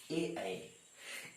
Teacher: कंठ और तालु से बोला जाता है, इसलिए इसे कंठ तालव्य कहते हैं